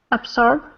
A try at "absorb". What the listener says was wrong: Absorb with a Z. Absorb.